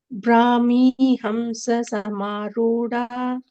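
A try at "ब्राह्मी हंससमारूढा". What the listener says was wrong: That Dha is Mahaprana.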